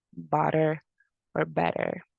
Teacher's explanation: the tongue like rapidly just touches or tap